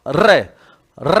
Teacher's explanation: रे बोलने में देखो जीवा कांप रही है, · वह व्यंजन जिसके उच्चारण में जीवा को दो तीन बार कंपन करना पड़ता है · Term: प्रकंपित, प्रक पित व्यंजन